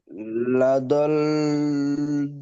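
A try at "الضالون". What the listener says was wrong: লা দল নয়, লা লা দ, দটা টান হবে, লা দ লু।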